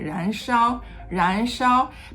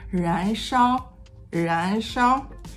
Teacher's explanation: the height of 烧 is kind of like assimilated to the end of 燃, which ends very high.